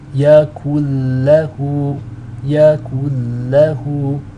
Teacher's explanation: You're dropping out the noon altogether and you're linking up the kaf into the lam with the shadda. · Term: idgham bila ghunna